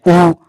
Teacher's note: जब हम ऊ का उच्चारण करते हैं तब मुख आकृति क्या हो जाती है? वृत्त आकृति की हो जाती है। · ऊ, तो आपके जो होठ है वो क्या हो जाते हैं? गोल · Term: वृत्तामुखी